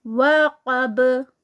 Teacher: वक़ब, क़ाफ heavy है यहाँ पर, और बा का एंड पे कलकला, क्योंकि बा स्टॉप पे चले जाएगी।